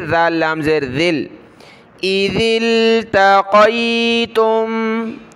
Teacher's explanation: ذال کو لام کے ساتھ ملائیں گے